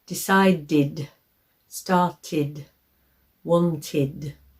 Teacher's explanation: So we have to add in another vowel sound. So we say id at the end of these words. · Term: id sound